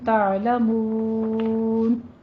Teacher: حقیقی ہے اور تم میں اظہار شفی کرنا ہے، تعلمون میں عین کو وسط حلق میں لے جائیں، یہاں پہ آپ نے جھٹکا نہیں لانا